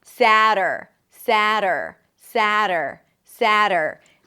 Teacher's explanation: The tongue flips against the upper palate and pulls back for the R. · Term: flap T